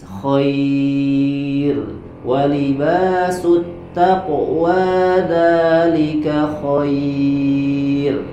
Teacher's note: Khair walibasut taqwa dzalika khair. Berhenti di situ, ro-nya dibaca dengan tarqiq atau tipis.